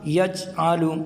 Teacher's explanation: قلقلہ نہیں کریں گے تو یوں ہوگا یجعل، جیم سے چا بنے گا، یعنی جیم کی آواز پھر نہیں آئے گی بلکہ چا کی آواز آئے گی ، اور چا حروف تہجی میں سے ہے ہی نہیں ہے،